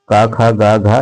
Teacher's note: जैसे ही बोलेंगे वो कंठ के द्वारा बोला जाएगा